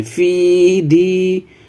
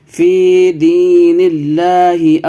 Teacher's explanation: فی کو کھینچیے، حرف مدہ ہے، اور دی کو بھی کھینچنا ہے